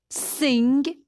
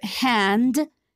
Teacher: certain vowels are nasal it means they are pronounced through the nose and mouth in some varieties of american english but not in most british accents when we've got a nasal